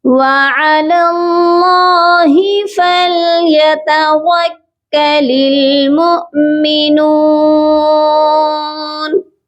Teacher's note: فَلْيَتَوَكَّلِ الْمُؤْمِنُونَ، یہاں پر بھی دیکھیے میم حمزہ پیش مو، یہاں پر بھی ہم حمزہ کو جھٹکا دے کر پڑھیں گے، مومنون نہیں اس کو پڑھنا، ٹھیک ہے، یہ پڑھا جائے گا وَعَلَى اللَّهِ فَلْيَتَوَكَّلِ الْمُؤْمِنُونَ۔